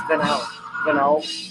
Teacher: I emphasize the second syllable in Venowl, but it could be Venowl.